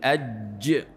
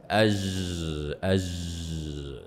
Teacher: ما هو الخطا انه اجرى الصوت مع هذه الجيم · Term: جيم شينيه